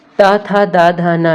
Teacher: त वर्ग का उच्चारण स्थान होता है दंत